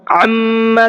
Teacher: عما کے میم میں غنہ کریں گے